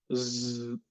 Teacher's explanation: the z sound is a voiced sound and it will involve the vibrations